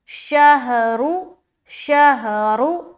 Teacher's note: را کو موٹا رکھیں گے کیونکہ اس کے اوپر کیا ہے، پیش ہے